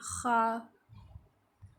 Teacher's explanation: یہ ادنی حلق سے، یعنی جو کہ حلق کا حصہ منہ کی طرف ہوتا ہے وہاں سے خا ادا ہوتا ہے